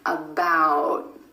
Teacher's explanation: Instead of that true T at the end, most Americans are going to hold that T, about. My tongue tip goes to the ridge behind my teeth and just stays there. · For the held T, you just skip step 3. You hold the tip of your tongue against the ridge behind your top front teeth, and you don't release any air. Held T happens at the end of words in American English.